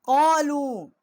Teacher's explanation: یہ قالو جو ہے یہ چھوٹی مد ہے، یہاں بھی ہم نے تین الف جتنا آواز بلند کی ہے